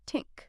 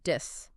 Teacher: For Spanish speakers, often they'll substitute a T or a D. Yeah. So think might become tink, Yeah.